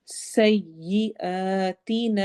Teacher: سین سیٹی والی آواز